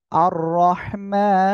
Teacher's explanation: র উপরে জবর মোটা করে পড়তে হবে · আর এখানে অক্ফ করলে সাকিন হবে, এজন্য আমরা এখানে তিন আলিফ টেনে পড়বো।